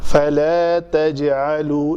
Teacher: جیم کے اوپر کلکلا ہوگا